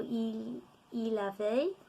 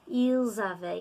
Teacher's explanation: because of the liaison with the S with the vowel